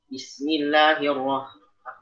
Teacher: Tadi masih ada kayak campuran kho pada huruf h.